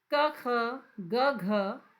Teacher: कंठ से बोला जाता है